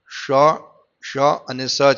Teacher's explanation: ઉષ્માક્ષરોમાં શ, શ અને સ છે, જે તાલવ્ય, મૂર્ધન્ય તથા દંત કહેવાય છે. આપણે કોઈ પણ ઉચ્ચારણ કરીએ છીએ તાલવ્ય, આ તાલવ્ય એટલે આ તાળું થશે.